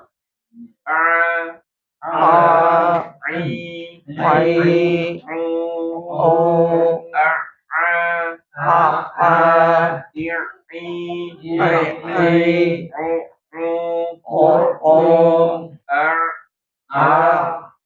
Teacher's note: Ainnya jangan ke hidung tapi di tengah tenggorokan gitu ya. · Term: huruf ain